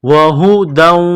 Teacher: یا کے ساتھ ملانا ہے، مصدقا لما بین یدیہ وہدا وبشرا، یہ گول ہاں ہے چشمے والی، صرف منہ سے ہوا نکالنے کی طرح اس کو پڑھیں گے